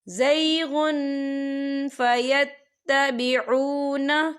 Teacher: فی قلوبہم زیغ فیتبعون، یہ دیکھیں زیغن، غین پہ تنوین ہے، تنوین کے بعد فا آ رہا ہے، اور فا جو ہے اکفا کا ورڈ ہے، تو ہم یہاں اکفا کریں گے، تنوین کی آواز کو ناک میں چھپائیں گے